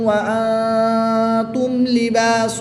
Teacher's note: میم ساکن کو خوب ظاہر کر کے پڑھیں گے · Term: اظہار شفوی